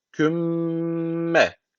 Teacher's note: okuyacağız kümme bu şekilde yani dudağı dudağı ağzı küm diye kapatıyoruz sonu m ile küm diye kapatıyoruz bir Elif tutuyoruz sonra M diye açıyoruz